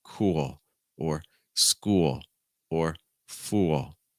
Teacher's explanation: the letter L in the middle of words and at the ends of words very often does not make a l sound it makes an o sound · it makes an o sound with the back of my tongue a little high